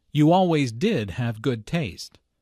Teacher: notice the stress on did which uses to emphasize the fact that Julia does have good taste